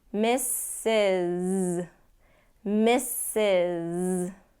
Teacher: the first s gets the S sound the last s it gets the Z